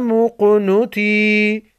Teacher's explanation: قاف ساکن کو ہلا کر پڑھیں گے کیونکہ یہ حروف قلقلہ میں سے ہے